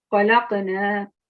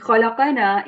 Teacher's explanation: qaf carries a sakun, and it's a qalqala letter, therefore. So you have to give a soft qalqala sound, a jerk sound.